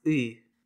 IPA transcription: ɨ